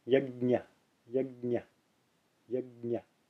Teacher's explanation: In the Sanskrit pronunciation, it's teeth fully closed together and then the ñ after that.